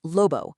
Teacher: Think of the B in a boat. But the Spanish B in lobo, it's totally different. The air just keeps on flowing. There's no stop.